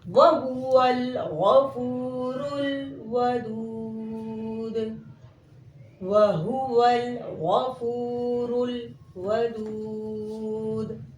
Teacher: ول اور رل میں صفت جہر پائی گئی، یعنی قوت کے ساتھ آواز مخرج میں رک گئی